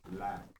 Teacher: He says la with a singular vowel sound